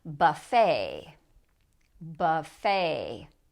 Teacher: this u sounds like uh because it's not stressed